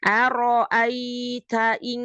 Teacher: nun sukun ketemu kaf, maka makhrajnya jauh, maka bunyinya eng